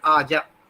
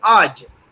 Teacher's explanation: I did that, but it is to pronounce it Aj. The A at the end of the word should not be pronounced.